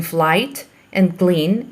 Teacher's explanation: l is devoiced after f and k in flight and clean